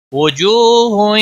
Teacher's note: واو مدہ ہے، ایک الف کے برابر کھینچ کر پڑھیں گے۔